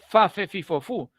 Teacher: Los dientes de arriba tocan los labios abajo. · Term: labiodental